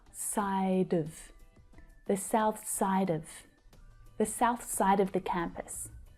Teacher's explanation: So we're replacing the full vowel sound of with the schwa